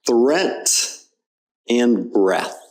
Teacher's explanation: you have the tongue between your teeth which is a difficult sound for English students to learn sometimes